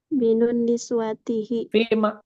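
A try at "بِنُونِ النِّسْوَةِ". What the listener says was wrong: Nggak ada tihinya. Binunin niswati. Binunin niswati.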